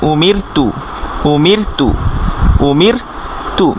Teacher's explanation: র এটার আগে কিন্তু কাসর দেয়া বা ই সাইনটা দেয়া, এটা হলে আবার র চিকন হয়ে যাবে।